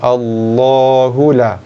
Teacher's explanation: Allahu la, kalimah Allah bila berada kedudukannya pada permulaan ayat, contohnya pada kalimah pada bacaan kita sekarang, ataupun sekiranya ia berada pada pertengahan ayat, maka kalimah Allah akan dibaca dengan 2 harakat sebagai mad asli.